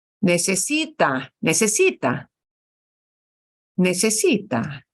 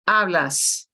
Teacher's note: the heavier stress the heavier punch in our voice falls on the second to last syllable right the infinitive it falls on the end but not on